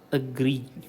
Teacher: the stress falls on the gree part